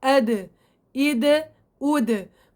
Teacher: مخرج حرف الدال يخرج من طرف اللسان مع منبت الأسنان، من طرف اللسان مع منبت الأسنان، أو أصول الثنايا العليا.